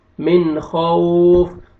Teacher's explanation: واو ساکن سے پہلے فتح ہے، واو لین ہے. من خوف، آپ نے واو کو اچھی طرح ادا کرنا ہے، لپس کو راؤنڈ میں لے کے جائیں گے، ہونٹوں کو گول کریں گے تو واو اچھی طرح ادا ہوئے گا.